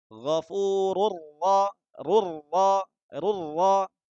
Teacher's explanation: Tanwin bertemu ro. Sama, langsung dimasukkan ke huruf setelahnya tanpa dibaca dengung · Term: Idgham bila gunnah